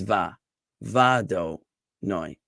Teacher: So this dot over the vav indicates that when I sing the word ado noi, so the emphasis is going to be on noi, but it's also going to be on the first syllable, a, which in this case is va do noi. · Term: stress mark